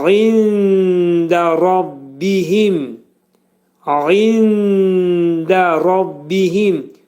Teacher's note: Nunun 1/3 hissəsi dəlin məxrəcində gizlədiləcək və dəl hərfi də dilimizdəki d hərfinin məxrəci kimidir. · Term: ixva